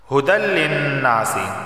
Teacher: ادھر ادغام ہوگا لیکن غنہ نہیں ہوگا